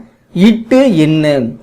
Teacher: இவை நாவினது நுனி அன்னத்தின் நுனியை தொடுவதனால் தோன்றுகின்றன